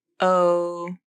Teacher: clear your throat you should feel something moving in your throat that movement is the vocal cords closing together and stopping the air flow and the sound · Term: glottal stop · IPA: /ʔ/